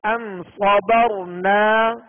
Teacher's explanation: میم ساکن ہے، اور یہ میم ساکن کے جو 3 قواعد ہم نے پڑھے تھے سبق نمبر 15 میں، تو ان قواعد میں سے اظہار شفوی ماشاءاللہ، تو یہاں پر غنہ نہیں کریں گے